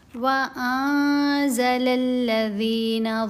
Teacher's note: جی تو یہاں ہم پڑھیں گے وَأَنزَلَ الَّذِينَ، نون ساکن ہے، اس کے بعد ہے زا، ہم نے یہاں پر کرنا ہے اخفا۔ اخفا کرتے ہوئے نون کی آواز کو ناک میں چھپایا جائے گا